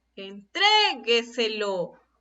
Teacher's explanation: En este caso, la sílaba tónica es tre.